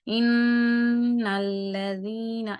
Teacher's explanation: جیسے ان الذین، ان جو ہے یعنی اب یہ دیکھیں آپ کو محسوس ہو رہا ہوگا کہ ان میں جو نون غنہ کی آواز ہے وہ ناک کے اندر سے ادا ہو رہی ہے